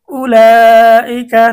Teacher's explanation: এখানে এই যে মদের হরফের পরে একই শব্দে হামজা আসছে, এজন্য মধ্যে মুত্তাসিল 4 আলিফ টানতে হবে